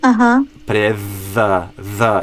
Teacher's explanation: try to get the th as the kind of smooth, continuous like buzzing sound